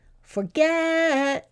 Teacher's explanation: I think the get was a lot louder and longer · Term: stressed